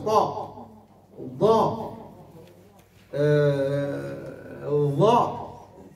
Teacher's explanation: قال رجوع رجوع اللسان، يعني اللسان يزيد يرجع، كي تقول طاء لسان تحسه راجع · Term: الحرف المفخم